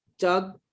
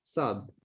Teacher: বিশেষ করে যে চুয়াডাঙ্গা নড়াইল এই অঞ্চলের লোকজন জ কে জ বলে, চ কে স বলে, চাঁদ না বলে বলে সাদ